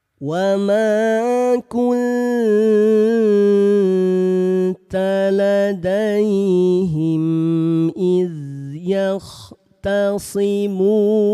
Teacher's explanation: Dibaca samar disertai dengung dengan dua harakat. kunta samar dua punya hukum tajid namanya ikh ikhfa. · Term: ikhfa hakiki